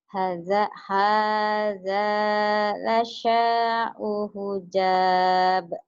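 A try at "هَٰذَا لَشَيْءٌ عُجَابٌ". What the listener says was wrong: Bukan, la syai'un itu. Jimnya keras. Jakarta. Keras. Jakarta, Jatinegara, Jati Barang, ja. Ujab, Jawa Barat, ja. Ujab, ja. Kerasin ya.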